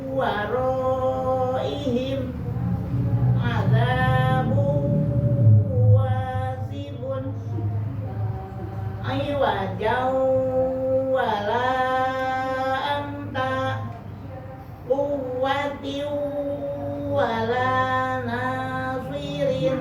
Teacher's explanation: Di sini tidak ada tasdidnya ya, tapi bahwa idgham itu artinya lebur. Jadi suara nun sukunnya lebur ke wawu meskipun di wawu tidak ada tasdid.